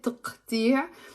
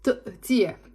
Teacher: in the Lebanese dialect, most of the times, unless you're from the Druze community, we don't pronounce the q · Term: like a hamza